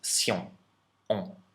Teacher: in French it is not an sh sound and it is not a n sound at the end. It's a nasalized vowel